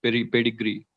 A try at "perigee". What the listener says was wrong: no, it's not pedigree, it's perigee and apogee.